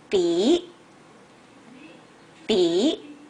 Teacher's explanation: start from a lower pitch and it goes up to a higher pitch